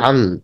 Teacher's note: শর্তই হচ্ছে ওই 15টি হরফের যে কোনো একটি হরফ যদি এই তানভিন অথবা নুন সাকিনের পরে আসে, তাহলে এভাবে গুণনা করে পড়তে হবে। মানে এটাকে বলে নাকের ভিতর লুকিয়ে লুকিয়ে গুণনা করা।